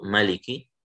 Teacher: caranya baca riwayat Qalun dengan memendekkan ma-nya menjadi ma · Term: pendek